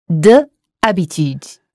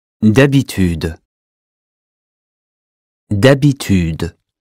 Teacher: If H is mute, it's as if the word started with the vowel which follows it